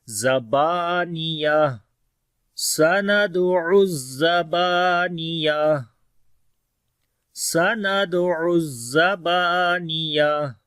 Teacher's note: سین کے اندر صفت ہمس ہوگی، دال کے اوپر قلقلہ کریں گے، عین کو گلے کے درمیان والے حصے سے پڑھیں گے. سَنَدْعُ، زا کے اوپر تھوڑی سختی ہوگی اور با کو لمبا کریں گے، الف مدہ ہے، رکیں گے تو تا ہا بن جائے گی